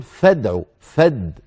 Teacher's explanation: فد من الفاء الى الدال مباشره اين الهمزه سقطت لانها ليست في بدء الكلام هذه الهمزه التي تجتلب للتمكن من البدء بالساكن اسمها همزه الوصل